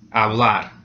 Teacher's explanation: So the last syllable is going to be stressed.